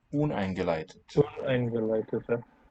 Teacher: The main stress there will be on the un.